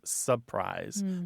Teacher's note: It often comes out as surprise. That first R is gone.